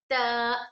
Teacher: ता में सिफत हमस पाया जा रहा है। सिफत हमस का मतलब ये है कि हम इस पे एयर फ्लो करना है। एयर फ्लो यानी हम सांस को जारी रखेंगे।